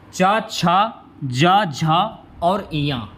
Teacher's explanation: च छ ज झ और य यह आपके तालू से बोले जाने वाले वर्ण है